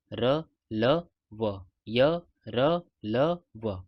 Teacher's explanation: ऐसे वर्ण जिनको जीभ और होठों के परस्पर सटने पर बोला जाता है। लेकिन यह पूरी तरह से कहीं पर भी स्पर्श नहीं करते हैं। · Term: अंतस्थ व्यंजन, अंतःस्थ व्यंजन